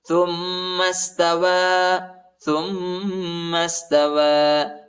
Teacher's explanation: تا کو میم کے ساتھ ملائیں گے، میم کو سین کے ساتھ ملانا ہے